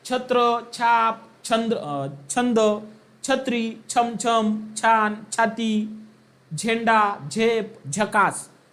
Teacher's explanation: या वर्णाचा उच्चार य युक्त होतो म्हणून हे संपूर्ण जे काही शब्द आहे तर ते तालव्यामध्ये जातील